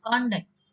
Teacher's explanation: when you give a stress in the first syllable, you pronounce it as conduct